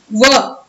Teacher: दंत और ओष्ठ से उच्चारित होता है. ध्वनि का नाम है दंतौष्ठ्य.